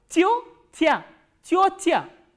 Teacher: this ya is unstressed. So, this will be reduced. · there are two soft vowels here, which means both these consonants will be soft.